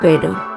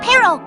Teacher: The first one is quick and light. The second one has that vibrating roll in the middle.